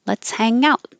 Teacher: Hang out is a phrasal verb that goes up.